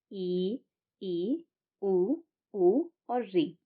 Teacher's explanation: सवित स्वर उन स्वरों को कहा जाता है जिनमें हमारा मुंह सबसे कम खुला रहता है